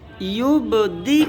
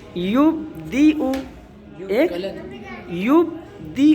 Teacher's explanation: یبدئ, یہ تو قلقلے کے ساتھ ہو گیا کیونکہ با پہ قلقلہ کر دیا ہم نے